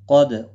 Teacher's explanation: قاف حروف مستعلیہ میں سے ہے، پر پڑا جائے گا. دال ساکن پر قلقلہ ہوگا.